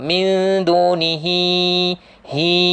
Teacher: Hi panjang sebab selepasnya jumpa hamzah. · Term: mat silah tawilah